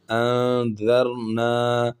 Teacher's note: کیونکہ یہاں پر جو تھا حروف اخفا میں سے کوئی حرف نہیں ہے، عین جو ہے یہ اخفا میں سے نہیں ہے، اور ذال جو ہے یہ اخفا میں سے ہے، تو اس وجہ سے ہم یہاں پر اخفا کریں گے